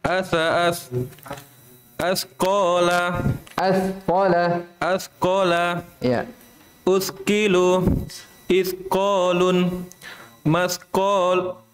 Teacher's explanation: hati-hati ya ketika ada sa bersukun. Jangan sampai berubah menjadi sin.